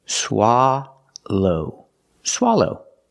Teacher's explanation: like stop and hot s for the first syllable s low the second syllable is a long o like no and go